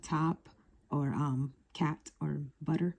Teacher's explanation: So T is a voiceless plosive consonant, and you hear it in the words like top or cat or butter. It's voiceless because when you produce it, the vocal cords they do not vibrate.